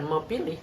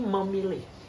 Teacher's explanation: sehingga fonem P itu luluh menjadi fonem m